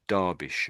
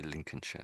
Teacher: But all of them are pronounced with this SHUR, sort of an ending. Although it looks like Shire.